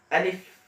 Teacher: আলিফটা উচ্চারণ হয় মুখের খালি স্থান থেকে। মুখের খালি স্থান থেকে আলিফ উচ্চারণ হবে, সেটা বলবো আলিফ।